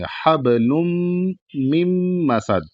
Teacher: پھر یہ میم اگلے میم میں مل جائے گا، بیچ میں نون نہیں پڑھا جائے گا کیونکہ یہاں پر اگلا والے میم پر تشدید ہے، اس وجہ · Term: گننا